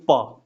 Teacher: प बोलना होगा तो हमको दोनों ओष्ठ सटाना पड़ता है। हम मुंह पूरा खोल के प बोल ही नहीं पाएंगे, वो कोई उपाय ही नहीं है।